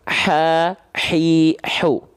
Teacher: H kecil dilafalkan dari wastul halqi tumma Li wastihi fainun haau ha kecil dilafalkan dari tengah tengah tenggorokan